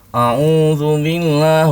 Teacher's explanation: mengucapkan ta'awudz dari awal sampai akhir dengan suara hidung.